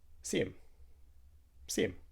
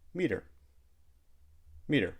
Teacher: sometimes we even delete the H sound in he her or him